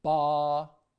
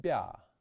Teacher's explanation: The difference between a hard b and a soft b has to do with how hard your lips are. quite firm for the hard b, while for the soft b, the lips are pursed and relaxed a bit.